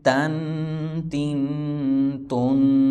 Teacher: زبان کی نوک کو اوپر والے دانتوں کے بیک سائڈ میں نیچے لگائیں گے تو تا ادا ہوگا